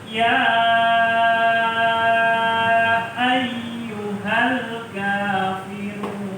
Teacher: ada Hamza maka bacanya panjang lima ketukan